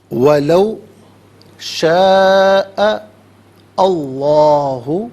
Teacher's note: اور شاء میں آخر میں حمزہ پر زبر ہے، اسے اس میں اللہ کی حرف لام کے ساتھ ملائیں گے. درمیان میں سے الف یعنی حمزہ کو حذف کیا جائے گا